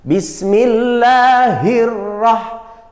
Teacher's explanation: La, tarkik. Lamul jalalah atau lafaz Allah dibaca tarkik. Tarkik itu tipis.